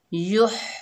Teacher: या को हा से मिलाकर पढ़ेंगे, हा हलक के दरमियान से अदा होगा